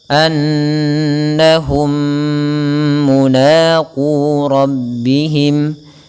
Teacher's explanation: Annahum, atau yang pertama idghamkan dulu mim yang pertama ke yang kedua dan ditahan dengan gunnah. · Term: idgham mimi